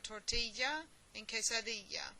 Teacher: the double l always has a y sound or a ya sound